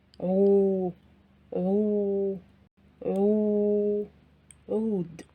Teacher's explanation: Here also Dhamma is still written, but the sound becomes longer because of the presence of the letter Waw after the letter Ain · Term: long vowel sound